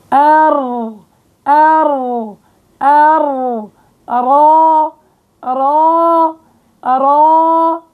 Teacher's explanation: وقت بتقعر وسط اللسان بضيق المخرج عند الحلق، فبصير آلية التفخيم